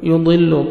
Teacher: یضل ضاد کو موٹا کر کے پڑھنا ہے